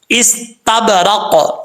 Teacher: قاف بھی حروف قلقلہ میں سے ہے. جب ساکن ہوگا تو اس میں قلقلہ ہوگا، کیونکہ ہم ساکن کر رہے ہیں، یہاں پہ وقف کر رہے ہیں، تو ظاہر سی بات ہے اس میں قلقلہ کیا جائے گا.